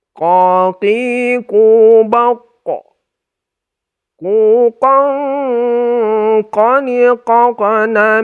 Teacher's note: harus ditebalkan ya karena Q ini Q itu adalah salah satu huruf istila atau huruf tebal jadi ketika kita dengungkan itu tetap tebal dia Q tetap tebal